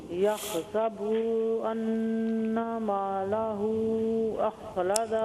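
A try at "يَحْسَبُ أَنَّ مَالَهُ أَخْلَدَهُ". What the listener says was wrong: جی یہ با پہ دمہ ہے، اس کو لمبا نہ کرے. یحسب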